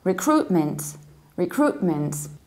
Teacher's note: in the fast speed you can actually drop this middle T and say recruitment recruitment and and the American accent we say